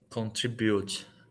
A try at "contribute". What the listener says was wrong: Contribute. But the stress is on the second syllable, like this. So stress on the second, contribute.